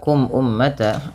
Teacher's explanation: Kemudian pada lafal kum ummata ada mim mati bertemu dengan hamzah. Maka hukum tajwidnya yaitu izhar syafawi yang di mana suara mimnya dibaca dengan jelas